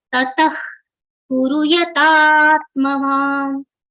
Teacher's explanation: visarga for which pronunciation is like only blowing of air like kha